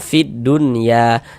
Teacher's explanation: alif lam syamsiyah itu huruf lamnya dia dibaca idgham. Makanya alif lam syamsiyah itu disebut juga dengan idgham syamsiyah atau idgham syamsi.